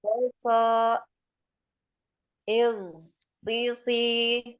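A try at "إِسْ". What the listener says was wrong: Lagi ulangi di hati-hati ya, jangan ke Z ya. Ini Ana dengar di alirannya kayak Z ya. Jadi S ya, S.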